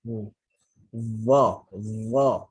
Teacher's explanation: adapun dha, maka hujung lidah jumpa hujung gigi atas. Okey, ataupun bahasa mudah dia bawa keluar sikit lidah tu.